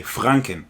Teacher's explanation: so it's like the r is kind of more in the back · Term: rolling r